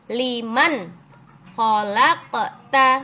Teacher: nun sukun bertemu dengan K ya harus dibaca jelas nunnya harus terdengar jelas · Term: izhar